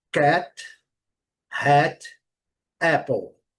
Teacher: O segundo som é aquele que eu falei, aquela mistura de A com E. É um som curto.